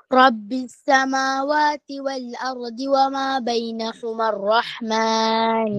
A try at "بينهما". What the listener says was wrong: Bainahuma hu. lagi kena baiki ya. Ha dengan ha berbeza. Wa ma bainahuma ar-rahman. Nahuma ar-rahman. Masih lagi saya dengar macam bunyi ha kan. Kena bagi kat situ Okey.